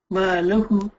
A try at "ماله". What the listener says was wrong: ماله. No, you're not saying it right. If you slow it down, so if just say malu. Hu. Maluhu. Before that, you were saying malahu.